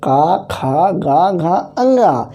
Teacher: का खा गा घा अंगा, इसका जो उच्चारण स्थान है वो कंठ से है